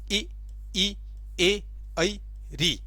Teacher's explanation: स्वरों के उच्चारण में जीवा के आगे का भाग सक्रिय रहता है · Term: अग्र स्वर